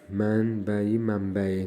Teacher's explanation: N M kimi tələffüz olunur ikinci tərəfdə